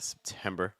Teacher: That first syllable is going to be very, very light and weak because it's not your stress.